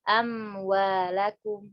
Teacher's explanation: mim sama waw, kedua hurufnya keluar dari bibir. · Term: mutajanisan